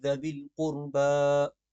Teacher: ذوی القربہ کی ذال جو ہے یہ نرم پڑھی جائے گی، یعنی کہ زبان کے سرے سے پڑھی جائے گی۔ قربہ کی را موٹی پڑھی جائے گی۔